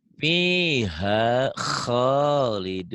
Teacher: kho-nya kurang ngorok ya